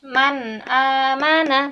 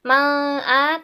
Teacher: nun sukun bertemu dengan huruf hamzah nah maka di nun sukun ini dibaca jelas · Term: izhar